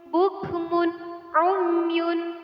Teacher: Ilhar artinya terang atau jelas. Jadi nun mati atau tanwin tersebut harus benar-benar dibaca jelas. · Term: bacaan ilhar